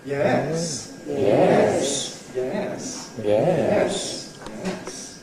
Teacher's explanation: Notice that the loudest part is at the beginning. If I say yes, that's a high fall. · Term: rise fall